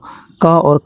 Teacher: क और ख का उच्चारण कंठ से होता है। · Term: कंठ ध्वनियां